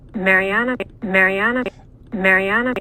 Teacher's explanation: what i hear is more of that rise on the third syllable than i hear um a low on the first syllable